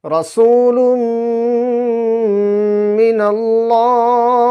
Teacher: নুন সাকিনের পরে যদি হরফে ইউমিনের মধ্যে হতে মিম আসে তবে তানভীন অথবা নুন সাকিনের আওয়াজকে নাকে তুলে এক আলিফ পরিমাণ গুন্নাহ সহ পড়তে হবে